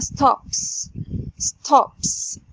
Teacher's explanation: ال p sound اللي في اخر فعل stop برضو voiceless consonant، لو حطينا ايدينا على الحنجرة مش هنلاقيه الاحبال الصوتية بتتحرك.